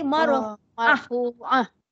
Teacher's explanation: Ya, tak bunyi ta dah. Bila dia berhenti dia tak jadi ta dah. Dia jadi huruf ha. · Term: ta marbutah